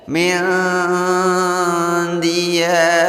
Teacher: harus disamarkan antara bunyi nun dan bunyi dal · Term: ikhfa